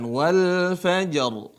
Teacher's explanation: sebelum ro sukun ada Jim sukun Tapi sebelumnya adalah fathah ini dibaca tebal